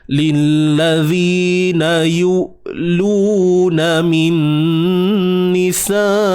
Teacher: huruf hamzah yang sukun sebelumnya baris hadapan. Yu, tahan suara. Okey, sifat syiddah, suara yang tertahan.